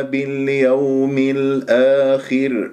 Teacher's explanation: كلمة اليوم واو ساكنة قبلها ياء مفتوح واو لين